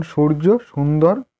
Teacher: জিহ্বার অগ্রভাগ উপরের দাঁতের পিছন দিকে স্পর্শ করে উচ্চারিত হয় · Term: দন্তেস্বর